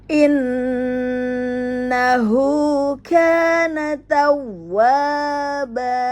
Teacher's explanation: Pada waw bertasdid dibaca 2 harokat matobi'i, ya. Kemudian ada tanwin, maka dibaca 2 harokat menjadi mat iwad, ya, dibaca fathah. · Natau masuk ke waw bertasdid, ya. Maka dihentak kemudian dibaca panjang karena ada alif sukun